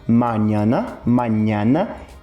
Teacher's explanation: Essa nasalidade ela é muito claramente reconhecível no espanhol, né, por esse som de ñ